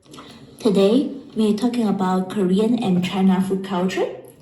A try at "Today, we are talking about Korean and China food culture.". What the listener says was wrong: Like food culture, It's going up, the tone is going up, and it shouldn't. Okay, it shouldn't be like a second tone.